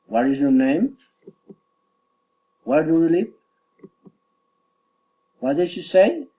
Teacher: Friendly interest, politeness, rising intonation.